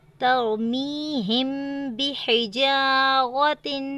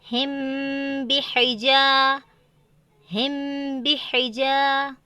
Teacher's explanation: غنہ کے ساتھ ہمیں پڑھنا ہے نا، میم ساکن کو غنہ کے ساتھ پڑھنا ہے